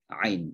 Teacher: sekali lagi keluarnya dari tenggorokan tengah